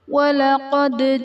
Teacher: دال حرف قلقلہ ساکن، یہاں پر قلقلہ خوب ظاہر کریں گے